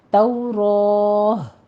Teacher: ہا کی آواز آپ کی ظاہر ہونی چاہیے جب آپ وقف کریں گے، صرف توراہ کہہ کر آپ نے وقف نہیں کرنا، توراہ۔ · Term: وقف ابدال